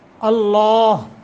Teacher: لفظ اللہ کو پر کر کے پڑھیں گے، تفخیم موٹا کریں گے ، ما قبل حمزہ ہے اور حمزے کے اوپر فتح زبر